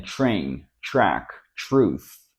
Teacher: When we see this combination, the letter T sounds closer to a CH sound as in chuck, choose.